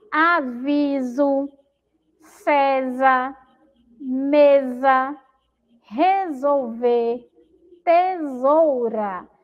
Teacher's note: no meio da palavra, entre vogais, o si tem som de Z